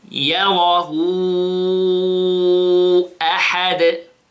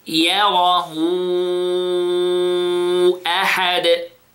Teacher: This vowel called mad sila kubra. Basically, we extend it how many seconds? 4 seconds.